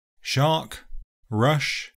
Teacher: The voice is not used, so the sound is a voiceless, post-alveolar fricative. You can also round the lips slightly to help the position, but it's not obligatory. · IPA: /ʃ/